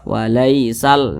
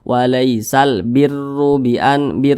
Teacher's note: Jadi kalau ada huruf ro yang memiliki tanda baca dhammah, maka huruf ro tersebut itu dibaca tebal, dibaca tafkhim, sehingga pangkal lidah kita itu keangkat ke atas